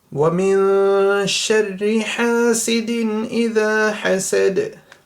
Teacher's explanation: Dal at the end means there's qalqala, so echo sound right at the end